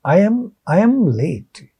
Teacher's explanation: when we hear this in regular speech, fast speech, there is a ya sound between I and I am. There is a ya sound in between.